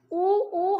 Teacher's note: इनको बोलते समय हमारे होंट जो है वो राउंड होते हैं